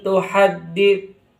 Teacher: lafaz tuhaddit itu ingat ada tasdid pada huruf dal. Jadi ditekan jangan sampai ada yang terlewati tasidnya nanti keliru bacanya.